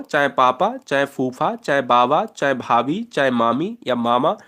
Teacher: ये होठ से बोले जाते हैं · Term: ओष्ठ वर्गीय व्यंजन